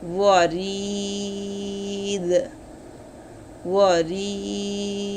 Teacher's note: আর এখানে হলো হরকতযুক্ত হরফের বামে ওয়াকফ হলে সাকিন করিয়ে পড়তে হয়, ওয়াকফ হলাতে দাল কলকলা